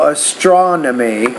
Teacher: you want to put the stress on that second syllable, astronomy. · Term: word stress